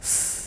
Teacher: this sound is produced by restricting the flow of air between the tip or blade of the tongue and the alveolar Ridge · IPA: /s/